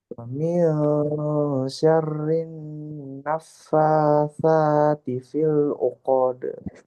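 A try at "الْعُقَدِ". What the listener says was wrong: Uqode itu panjang qafnya. Langsung ke dal uqode. Uqode.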